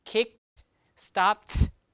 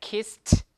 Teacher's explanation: the d will change to a t right when it occurs after a voiceless sound